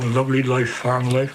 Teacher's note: His speech has the elongated vowels and rolled R